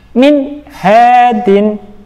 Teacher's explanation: ada nun sukun bertemu dengan huruf ha, dinamakan bacaan idhar halqi, harus dibaca jelas tanpa mendengung.